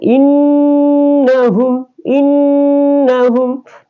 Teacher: Nun bertasdik ya maka dibaca dengung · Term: gunna